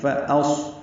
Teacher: حمزہ اقصی حلق سے ادا کریں گے، اس کی صفت جہر کی ہے